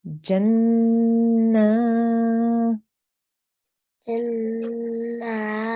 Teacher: We're going to make the nasal sound for 2 seconds. Then we're going to extend or elongate for 2 seconds because of the vertical fattah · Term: noon gunna